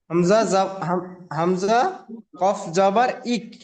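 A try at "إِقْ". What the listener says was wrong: জাবার নয় জি ঈদ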